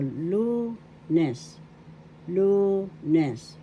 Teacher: The accent is on the first syllable, lunes.